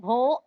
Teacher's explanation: భోగాస్ లో బా మహాప్రాణాక్షరం కాబట్టి శ్రెష్టిస్తూ భో అంటున్నాం